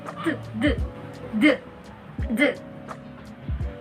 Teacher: D is a voice alveolar plosive, wherein the oral passage is blocked by pressing the tip of our tongue against the alveolar ridge